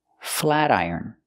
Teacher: We hear the T changed to a fast D.